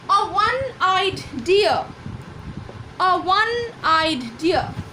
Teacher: ওকে, ONE আর WON এই দুটোর উচ্চারণ একই। তাহলে ওয়ানের অ্যাকচুয়াল প্রোনাউন্সিয়েশন হলো WON অ্যান্ড W is আ consonant. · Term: কনসোনেন্ট সাউন্ড